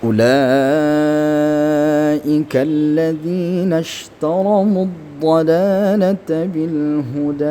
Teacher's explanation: Ulaika panjang lima harakat. Ketika mad bertemu Hamzah dalam satu kalimat namanya mad wajib muttasil ya. Mad wajib muttasil.